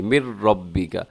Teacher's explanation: ادغام ہوتا ہے بغیر غننے کے، مِن رَبِّكَ، اسے مین ایسے نون کی آواز بالکل نہ ہو، نون ختم میم زیر را مر ملا کے پڑھیے گا